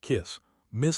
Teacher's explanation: This singular has a short I sound and an unvoiced s pronunciation ths. The vowel is short, relaxed, and happens in the throat.